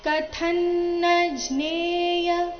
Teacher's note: ಕಥ ಮಹಾಪ್ರಾಣ ರಸ್ವ ಬರಬೇಕು ಮುಂದಿನ ಅನುಸ್ವಾರದ ಉಚ್ಚಾರಣೆ ಅನುನಾಸಿಕ ನ ರೀತಿ ಕಂಸದಲ್ಲಿ ಕೊಟ್ಟಿದ್ದಾರೆ ಕಥನ್ನಜ್ನೇಯ ಮಸ್ಮೆ ಮ